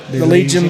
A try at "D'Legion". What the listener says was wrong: D Legion, not the Legion. D apostrophe.